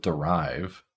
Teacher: in the case of derive, the stressed syllable is rive. So this sound becomes a schwa, it becomes reduced.